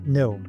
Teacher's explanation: Tongue tip against alveolar ridge, air through nose. The example is no.